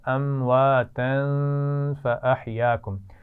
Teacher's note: امواتن کی تنوین پر بھی غنہ ہو رہا ہے کیونکہ اس کے بعد فا آ رہا ہے